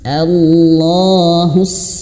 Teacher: Hus sadnya tebal dan dia mengalirkan nafas